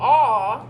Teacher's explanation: your tongue is going to be back and down a and you're going to be making it down here a